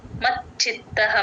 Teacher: మ కి చ ని జాయిన్ చేసి చెప్పాలి ఇక్కడ మహాప్రాణం లేదు మచ్చిత్తః మెత్తగా చెప్పాలి మహాప్రాణం లేదు గమనించ చిత్తః మ కి చ ని